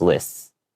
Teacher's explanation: So it's just a slight longer S sound, but you don't have to make it, too exaggerated.